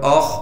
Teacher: हमजा को फिर हम आगे खा से मिला देंगे इसलिए कि खा पर तशदीद है और खा को मोटा करके पढ़ेंगे